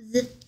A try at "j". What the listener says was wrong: Z 아니고요. 쥐인데 아, 입술 동그랗게 하고 쥐인데 Z가 아니고